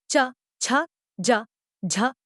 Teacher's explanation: घर्षण दोनों प्रयत्न दृष्टिगत होते हैं इनके उच्चारण के समय इनमें उच्चारण अवयव उच्चारण स्थान को स्पर्श करने के बाद दूर तो हटते हैं किंतु फिर भी इतने निकट रह जाते हैं कि वायु घर्षण करती हुई ही मुख से बाहर निकल पाती है इन व्यंजनों के उच्चारण में पहली स्थिति स्पर्श की होती है · वायु घर्षण करती हुई ही मुख से बाहर निकल पाती है इन व्यंजनों के उच्चारण में पहली स्थिति स्पर्श की होती है और दूसरी स्थिति संघर्ष की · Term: स्पर्श संघर्षी व्यंजनों